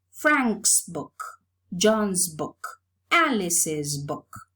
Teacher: If we pay attention to the last sound in Frank, it's voiceless, so the possessive morpheme is realized as a voiceless sound too. While in John's is voiced, so the possessive morpheme is realized as a voiced sound too.